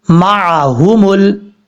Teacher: اب اس کے بعد ہے میم زبر ما، عین زبر ع، ہا پیش ہو، میم لام پیش مل، معہم ال. عین کو اپنے مخرج سے ادا کرنا ہے، حمزہ کی آواز نہیں آنی چاہیے. یہ جو ہا ہے یہ ہا بھاری ساؤنڈ کے ساتھ پڑھا جائے گا.